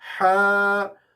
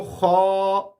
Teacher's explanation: یہ ہا حروف حلقی ہے، اور خا حروف مستعلیہ بھی کہتے ہیں، موٹے حروف بھی کہتے ہیں